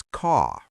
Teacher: An American will fully pronounce the R in words like car, bird, butter, here, and world. Most standard British English is non-rhotic. The R is typically not pronounced unless it is followed by a vowel.